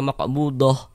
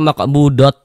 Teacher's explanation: Kalau kita berhenti tepat di huruf ta marbutah maka dia jadi huruf H. Kalau kita kita wasalkan maka dia jadi maka dia jadi huruf ta yang kita baca seperti itu.